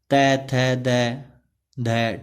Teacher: ठीक है, थर्ड जो है दंत्य। इनके उच्चारण में जीभ ऊपर के दांतों को छूती है